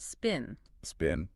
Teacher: in this context the p is usually unaspirated so just P without that extra air